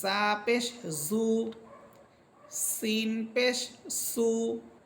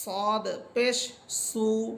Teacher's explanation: সিন এবং জা এই দুইটা হরফ চিকুন, আর সদ এটা হচ্ছে মোটা হরফ।